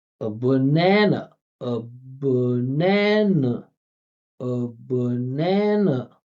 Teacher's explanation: Listen how many schwas there are. Three schwas, only one sound standing out. And it's not a consonant sound, it's a vowel.